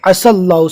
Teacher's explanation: عسى اللہ، یا کو نہیں پڑھنا ہے، بہت سے لوگ عسى اللہ پڑھ رہے ہیں لیکن غلط ہے، عسى اللہ، سین کو ڈائریکٹ اللہ کے نام سے ملانا ہے، یا کے اوپر کوئی حرکت نہیں